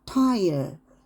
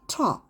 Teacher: 그 혀 끝을 대고 텅팁을 대고 튀겨져요